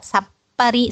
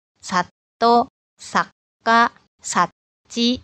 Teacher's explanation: Nah, Ciri khasnya kalau diikuti oleh bunyi plosif ini, maka bunyi sokuong yang dihasilkan itu berupa bunyi diam atau bunyi kosong, atau seperti ada jeda ya